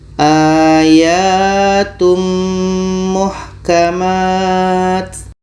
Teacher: Tanwin sempurna masuk ke mim. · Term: idgham kamil